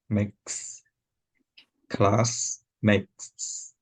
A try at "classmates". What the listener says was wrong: No, you're doing a cut again. Because instead of your tongue coming back like this, you got to get your tongue forward. reason why you're saying class makes is because your tongue is in a cut at the beginning. So your tongue naturally wants to go back there.